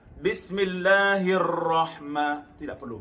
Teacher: yang takril bergetar pada satu getaran